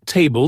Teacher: In every English word with more than one syllable, one part of the word is stressed, meaning it's pronounced longer, louder, and with more energy. For example, in table, the first syllable is stressed. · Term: word stress